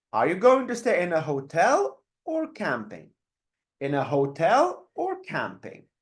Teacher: the first option would go up and then the second option would go down